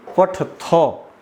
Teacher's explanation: थ में अ स्वर लगा हुआ है, तो इसलिए हमको थ का पूरा उच्चारण करना चाहिए